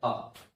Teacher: जब हमारा मुख विवृत पूरा खुला होता है तो एक ही स्वर ऐसा है जो बोला जाता है, वो होता है आ